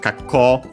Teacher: a Chinese compound, unaccented, with the longer vowel, so with the O, with the U at the end.